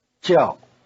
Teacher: The verb in the question and answer is 叫, to be given named. It has the falling tone.